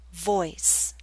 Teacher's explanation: we're using a slight Y sound, y, to make this glide possible.